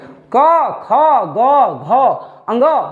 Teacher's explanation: उच्चारण हो जाता है कंठ में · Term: कवर्ग